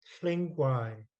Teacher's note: there's an NG blend and the G is silent. Then it would be Klingwai.